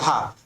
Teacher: कितना तेजी से आपका जो जीभ है वो मूर्धा को छूकर वापस नीचे आता है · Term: उच्छिप्त व्यंजन